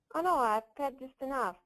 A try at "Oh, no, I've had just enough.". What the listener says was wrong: Emphasize the word just a little bit more. I've had just enough.